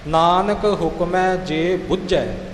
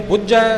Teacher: ਨਾਨਕ ਹੁਕਮੈ ਜੇ ਬੁੱਝੈ, ਕਿਉਂਕਿ ਇੱਥੇ ਬੁੱਝਣ ਦਾ, ਜਾਣਨ ਦਾ ਅਰਥ ਹੈ ਇੱਥੇ ਅਸੀਂ ਥੋੜਾ ਜਿਹਾ ਅਦਕ ਲਾ ਕੇ ਇਹਨੂੰ ਕੱਸ ਕੇ ਬੋਲਾਂਗੇ